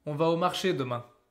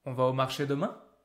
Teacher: There's something natural about letting your voice going up at the end when it's a question.